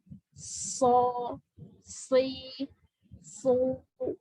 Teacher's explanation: As-sofir itu adalah keluarnya suara seperti menyerupai desis burung.